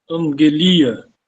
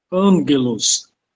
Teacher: Ele vai ter o som de N. O nome disso daqui, o gama pronunciado como N, é chamado de gama nasal.